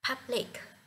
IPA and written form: ˈpʌblɪk (Public)